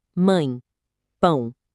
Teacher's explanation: O som não sai limpo só pela boca. Ele ressoa. É por isso que o tio é um sinal auxiliar de som e não um acento de força. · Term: nasal